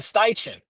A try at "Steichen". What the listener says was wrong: Not Steichen with the CH. Steichen. Steichen.